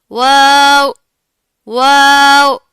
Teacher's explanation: दोनों होंठों को गोल करने से वाव अदा होगा, मुकम्मल गोल करना है आपने, ठीक है, नर्म साउंड है।